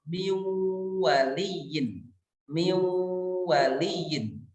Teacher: nun sukunnya itu masuk lebur kepada waw dan kemudian disertai dengan gunnah selama 2 harokat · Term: idgham bi gunnah